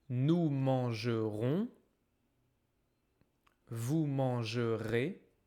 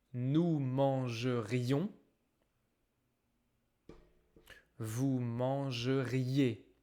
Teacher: Attention à la prononciation avec nous et vous. Conditionnel, nous mangerions. On entend le i. Nous mangerions.